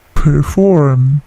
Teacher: P-nya plosif tetapi tidak terlalu besar plosifnya